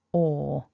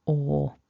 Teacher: So the front of the mouth is kind of rounded and your lips come forwards, and you need to make a long single vowel sound, OR. · Then we've got this OR vowel, OR. So the front of the mouth is kind of rounded and your lips come forwards, and you need to make a long single vowel sound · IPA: ɔ:, /ɔ:/